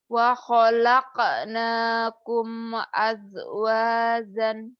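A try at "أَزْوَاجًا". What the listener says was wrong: Mana jim mana jai dia bingung. Yang pertama Zai dulu.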